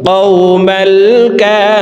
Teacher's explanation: রি এখানে তিন আলিফ টেনে নুনকে সাকিন করে ফেলবো · মদের হরফের বামের হরফে ওয়াকফ হইলে মধ্যে আরজি তিন আলিফ টানিয়া পড়িতে হয়